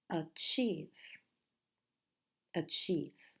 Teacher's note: And the stress in this word, the strong syllable is the second.